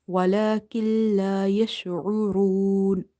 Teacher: Skip this noon. Directly join this kaf with the lam.